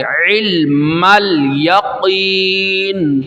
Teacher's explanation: علم، عین واضح کرنا ہے، حمزہ نہیں ہے، عین کو نکال کے علم الیقین، قاف کو موٹا کرنا ہے